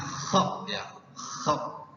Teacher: Kha hampir sama dengan ha, cuman bunyinya lebih ngorok, ya, seperti orang ngorok dalam tidur.